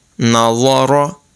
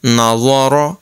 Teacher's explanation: ظا حروف مستالیہ میں سے ہے اس کو پر پڑھیں گے